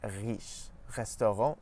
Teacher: But in French we pronounce it at the back of our mouth close to the uvula. So when we push our tongue back a bit, it forces our tongue to pronounce the R sound further back in the mouth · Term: French R sound